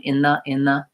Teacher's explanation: So I link from, for example, in phrases like in the, I'm linking between the N and the TH, and it becomes more of one sound, in the. But it's typically always there.